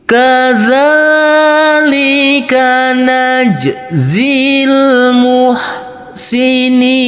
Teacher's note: untuk yang empat harakat kita kasih Irama Nada naik · untuk yang enam harakat kita kasih Irama Nada turun